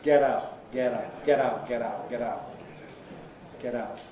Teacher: I'm doing the American style voicing of the T, making it like a quick D or an R sound almost. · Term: T-voicing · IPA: [ˈget̬ ˈaʊʔ]